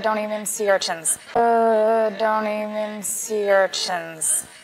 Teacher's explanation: In American English, when a word or a syllable ends in nt, it's common to just pronounce the n.